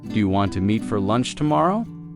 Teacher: In casual speech, do you want to often sounds like do a wanna.